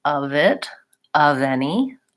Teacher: use linking it's easier to say of it of any of leave my voice on and make that V sound between those two words